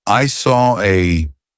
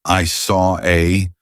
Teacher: we have the or sound of Saw and then an a we have another open vowel sound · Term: intrusive R